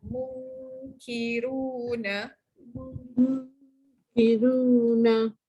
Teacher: Qaf dalam, kaf atas sikit. Masih lagi kat lidah yang dalam ya. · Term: huruf kaf